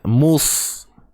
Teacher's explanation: Huruf sad ni huruf yang tebal. Jadi macam mana nak tahu tebal? Pangkal lidah kena naik. Mus. Sebahagian besar lidah yang di bahagian depan ni pun kena naik. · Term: Huruf sad tebal